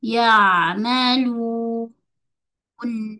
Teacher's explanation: Jadi mail sukun ambil 4 2 4 en kita ambil empat harakat. Empat harakat panjang satu harakat ghunah pada nun ghunah naqis.